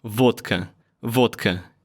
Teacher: D sounds like T because there's K next to it. It's hard to voice it because of that.